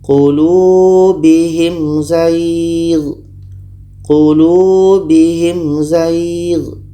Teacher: Mim jelas, za jelas, dan tidak ada dengung. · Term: izhar syafawi